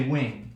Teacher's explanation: notice what happens here, right, is that we don't even pronounce the g, right? We say wink, right? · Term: velarization